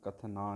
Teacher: ਕਥਨਾ ਨੰਨਾ ਖਿਆਲ ਨਾਲ ਪੜ੍ਹਨਾ ਹੈ, ਨਾਣਾ ਨਾ ਬਣ ਜਾਵੇ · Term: ਨੰਨਾ ਮੁਕਤਾ